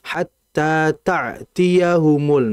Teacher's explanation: Hamzah itu pengucapannya berada di bawah tenggorokan, sedangkan ain berada di tengah tenggorokan.